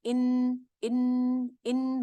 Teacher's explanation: اوپر کے سامنے کے 6 دانت، زبان وہاں لگتی ہے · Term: نون کا مخرج